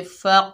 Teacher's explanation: फा के ऊपर ज़बर है, आगे कौफ साकिन है, फा को कौफ साकिना से मिलाएंगे तो यहाँ पर कलकला सोरा होगा, डबल साउंड आएगा